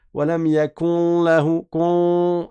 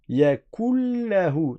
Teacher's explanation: C'est comme si le noun n'avait pas du tout existé et tu passes du kef au lem. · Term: fusion complète